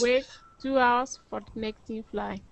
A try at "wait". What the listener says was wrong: You know, because your merger sound was like this. Wet, wait.